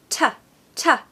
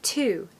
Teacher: It's more like ta. So we just sort of hint at the vowel after the T sound, but it's definitely a very strong t sound. Ta, not to.